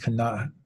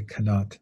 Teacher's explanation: It's got that kind of glottal sound at the end, kanat. In Turkish, they simplify it and they just say kanat.